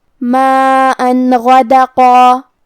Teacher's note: ہم یہاں تنوین ظاہر کریں گے اور اسے نون ساکن پڑھیں گے اور بغیر غنہ سے یہ حکم کو ادا کریں گے۔ ماءً غدقا، کلمت غدقا میں حرف الغین کو ہم حلق کے اوپر والے حصے سے ادا کریں گے اور وہ حروف التفخیم میں سے بھی ہے تو ہمیں یہ حرف کو بھاری آواز میں پڑھنا ہے۔ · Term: اظہار